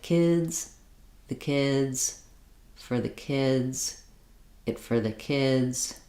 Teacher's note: can still use this backwards chaining technique at a slower rate you're just going to try to keep that relative Rhythm where kids is going to be longer